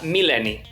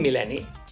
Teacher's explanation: la ela geminada què és aquesta doble ela amb un punt enmig què es pronuncia amb una petita pausa aquest punt, demana com una petita pausa Altres paraules amb ela